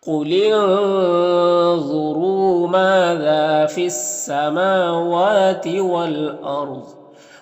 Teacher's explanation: یہاں پر الف لام حروف شمسی سین کے شروع میں ہے تو الف لام دونوں کو نہیں پڑھیں گے · والارض یہاں پر را ساکنہ سے پہلے حمزہ کے اوپر زبر ہے تو را کو پر پڑھیں گے۔ ضاد حروف مستعلیہ میں سے پر پڑھیں گے، اور وقف کی صورت میں زیر سکون سے بدل جائے گا · ما میں اور ذا میں دونوں میں الف مدہ ہے، 1 الف کے برابر کھینچیں گے